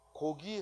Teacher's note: 첫 소리의 기억은 안 울림 소리예요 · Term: 변이음